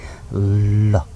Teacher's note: ल भन्दाखेरि थोरै सास जिब्रोको दुईतिर छेउबाट बाहिर निस्कन्छ। ल अलिकति लामो पारेर उच्चारण गर्नुहोस् त, ललाई ल गर्दाखेरि जिब्रोको दुई छेउबाट सास निस्किरहेको हुन्छ। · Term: पार्श्विक